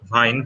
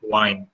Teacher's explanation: instead of vine they say wine